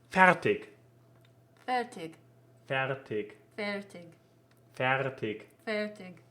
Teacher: a german word with an r in the middle with a nicely rolled r